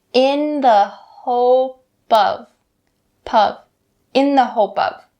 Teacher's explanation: you can bring that final p sound over to of.